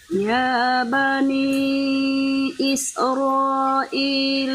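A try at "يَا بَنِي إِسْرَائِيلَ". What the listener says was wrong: Masih sedikit mantul-mantul, Bu. Disempurnakan saja. Ya bani isro. Dia tidak mantul, juga tidak diputus juga, bukan isro, nggak boleh gitu juga. Tapi masuknya santai aja.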